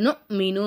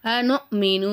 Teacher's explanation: ஏன்னா இது கல்கலாவுடைய எழுத்து கிடையாது. இங்கே நமக்கு கல்கலாவுடைய சட்டம் வராதுங்கனால நம்ம என்ன செய்யக்கூடாது, நூனு அசைக்கக்கூடாது. அசைக்காமல் நம்ம நொ மீனு அப்படின்னு ஓதணும்.